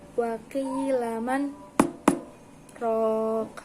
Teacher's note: terdapat hukum bacaan sakta, yang mana berhenti sejenak tanpa bernapas. Membacanya sekitar 1 alif atau 2 ketukan, yakni wa qila man raq.